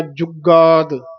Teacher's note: ਵੀ ਜੁਗਾਦ ਇਹ ਪੋਲਾ ਨਹੀਂ ਬੋਲਣਾ ਥੋੜਾ ਜਿਹਾ ਕੱਸ ਕੇ ਬੋਲਣਾ ਜੁਗਾਦ ਗਾ ਬੋਲਣਾ ਕਈ ਵਾਰ ਅਸੀਂ ਜੁਗਾਦ ਘਾ ਬੋਲ ਜਾਂਦੇ ਹਾਂ ਜੁਗਾਦ ਦਦੇ ਦੀ ਆਵਾਜ਼ ਆਵੇ ਜੁਗਾਦ ਸੱਚ ਹੈ ਭੀ ਸਚੁ ਇਹ